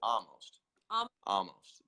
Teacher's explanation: Like no L whatsoever, just almost. some people will put a bit of L in there, but because you're Australian and I do this with Brits too, and that L can really bog you down with a sound, I just say drop it because half the US drops it. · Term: drop the L